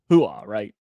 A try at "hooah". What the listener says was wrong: Yeah, not that. Ooh. It's not that pronounced.